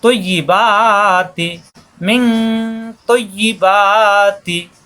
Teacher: কুলু মিং তৈয়িবাতি, ত মোটা হবে আর তা হবে না, ত মিলবে ইয়ার সাথে তৈ, পরে ইয়া যে ই, তৈয়িবাতি, ইয়া দোনোবারই জিব্বার মাঝখানে উপরে তালুতে লাগবে